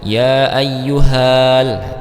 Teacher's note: Maka langsung masuk ke lam sukunnya ya nah tidak dibaca panjang dulu